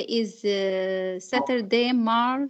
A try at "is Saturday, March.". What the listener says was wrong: Yeah, this is not how we say it here. If you say it this way, it means that there is no full stop, and I can see that there is a full stop. then you take a little breath and then you start a new sentence.